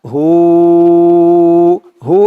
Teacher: এখানে তিন আলিফ টান হবে